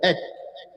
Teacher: Hujung lidah itu yang menekan pada, diangkat menekan pada pangkal gigi seri atas. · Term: makhraj ta